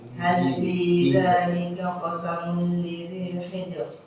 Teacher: Tipis. Ya, tipiskan rohnya. Hal fi dzalika qasamun lidzi hijr. Tipiskan lagi.